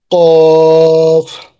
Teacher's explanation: জিব্বার গোড়া তার বরাবর উপরের তালুর সঙ্গে লাগাইয়া